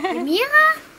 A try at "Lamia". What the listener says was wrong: Lamia. Hm? Ohne R. Lamia.